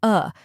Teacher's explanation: a short and relaxed sound like the a in sofa